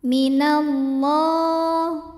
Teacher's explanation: Allah mad tabi'i muqaddar karena ada baris fathah tegak di atas huruf lam. Cara membacanya panjang lamnya 2 harokat saja.